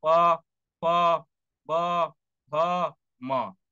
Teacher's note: जब तक आपके होंठ आपस में मिलेंगे नहीं, आप प फ ब भ म नहीं बोल सकते। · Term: ओष्ठ व्यंजन